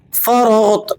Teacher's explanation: را اور غین دونوں کو آپ نے پر کر کے موٹا کر کے ادا کرنا ہے اور غین پر آپ قلقلہ ادا نہیں کریں گے۔ بعض ساتھی اسے ریپیٹنگ ساؤنڈ یعنی پلٹتی ہوئی آواز کے ساتھ پڑھ دیتے ہیں، ایسا درست نہیں ہے، یہ حروف قلقلہ میں شامل نہیں ہے، غین حروف قلقلہ میں شامل نہیں ہے۔